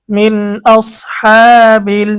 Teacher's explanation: নুন সাকিন ও তানভিনের পরে ইজহারের 6 হরফের কোন একটি হরফ আসিলে তখন ওই নুন সাকিন বা তানভিনকে গুন্নাহ ছাড়া স্পষ্ট করিয়া পড়িতে হয়। এখানে নুন সাকিনের পরে ইজহারের হরফ হামজা এসেছে, আমাদেরকে গুন্না ছাড়া স্পষ্ট করে পড়তে হবে। মিন, হামজা সদ জবর আউস, হা খারা জবর হা, খারা জবরের কারণে এক আলিফ টান।